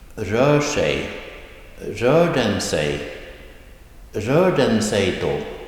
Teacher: Keep in mind that this is all rising tone accent 1